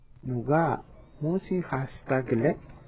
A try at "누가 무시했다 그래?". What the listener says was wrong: Yeah, this 했다, you don't really pronounce the 쌍시옷 here, like 했다. 했다. It has a closing 받침.